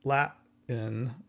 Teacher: We actually just stop our breath, Latin, and we kind of hear this T, but it's not really there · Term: glottal stop